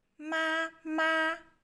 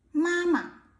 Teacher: when it becomes the word mama, the second one become a neutral tone for it's easier to say.